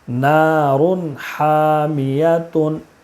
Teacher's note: یا زبر یا، تا دو پیش تن، نارن حامیتن۔ تنوین کے بعد حروف حلقی کے 6 حرفوں میں سے حا ہے، اس لیے تنوین کو بغیر غنہ کے جلدی پڑھیں گے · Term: اظہار